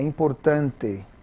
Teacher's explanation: Em português a palavra important é importante. Ó, você tem ali o acento no tan, né? Mas o T também ele não fica escondido, ele aparece, né?